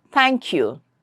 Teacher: That means the tongue will come in between your teeth and they are fricative. Air will come out through a narrow opening in your mouth and th and the. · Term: lingua dental